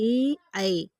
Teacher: ए ऐ वर्ण कंठ तालव्य। ए ऐ तो कंठ से और तालव्य, कंठ तालव्य हो जाएंगे ए ऐ।